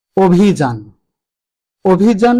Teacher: শব্দটি লেখার সময় আমরা স্বর অ ব্যবহার করেছি কিন্তু উচ্চারণের সময় ওকারান্ত হয়ে গেছে